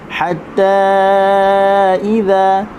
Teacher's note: huruf ha halkum tengah